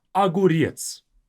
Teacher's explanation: we have O to be the first letter. But because it's not stressed, we say it as a.